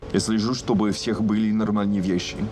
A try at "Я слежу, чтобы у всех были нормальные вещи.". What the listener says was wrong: First of all, he didn't say у всех. He said я слежу, чтобы у всех. It's like he didn't pronounce чтобы у всех. That is like oo sound. We didn't hear it because Russians we like to oo. This oo, it does give away a strong difference because we always say чтобы у всех.